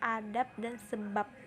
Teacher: silaba akhir kata adab dan sebab diucapkan P, adab dan sebab.